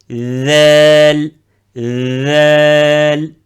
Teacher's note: le bout de la langue entre les dents, où il touche les incisifs supérieurs et inférieurs. Avec une vibration